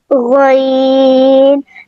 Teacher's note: गईन हलक के शुरू वाले हिस्से से अदा होगा।